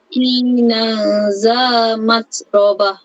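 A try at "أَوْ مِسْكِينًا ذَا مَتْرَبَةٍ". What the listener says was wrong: Dia ada berdesir lagi tu. Okey, cuba latih supaya tak ada desiran. Au miskinan za keluar lidah. Jangan panjang sangat. Ada nipis. Tekan sikit, lepas tu gigi atas tu tekan kepada lidah tu. Okey, nipiskan za. Keluar lidah, ingat za. Dia 3 huruf yang sama. 3 huruf yang sama mahraknya.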